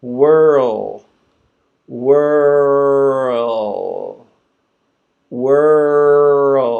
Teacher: my tongue is going up for the L sound, right, at the top of the mouth